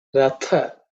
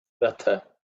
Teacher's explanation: Tha here is the second letter in the Tavarga. So it has to be aspirated with some air, extra air.